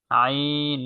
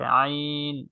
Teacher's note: মাখরাজ জিহ্বার না কণ্ঠনের মধ্যখান থেকে আইন নরম করে